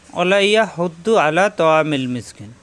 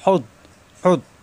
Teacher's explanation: হু কণ্ঠনালীতে চাপ দিয়ে হু মিলবে দদের সাথে, জিব্বার গোড়ার কিনারা উহুরে মারি দাঁতের গোড়ায়।